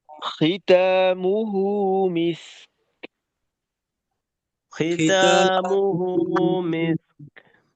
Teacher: কাফে আটকাবে বাতাস থাকবে শেষে